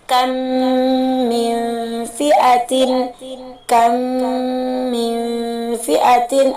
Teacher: idgham mimi ini masuk ke dalam gunnah akmal yang pernah kita bahas sebelumnya, gunnah yang paling sempurna karena di situ terdapat mim dengan mim